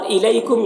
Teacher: یہاں پر یا لین ہے، اسے نرم آواز کے ساتھ جلد پڑھنا ہے